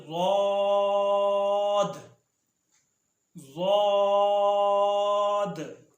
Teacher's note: ضاد زبان کی کروٹ اور اوپر کی 5 داڑیں